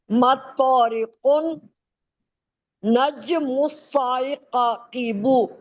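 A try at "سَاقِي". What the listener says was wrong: سائقیبو کیوں بولتی ہیں؟ ساقیبو ہے. ساقیبو ہے. مس پھر سا الف زبر سا مسا، پھر قاف زیر قی مساقی، با پیش بو. ہاں مسائقیبو آپ کہہ رہی تھی نا.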